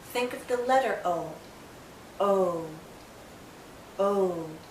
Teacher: It finishes actually with a slight oo sound. O. Do you see how my lips start larger and then pull in to a tighter circle? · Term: long vowel sound